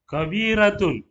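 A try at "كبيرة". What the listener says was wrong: Bukan ko, ka.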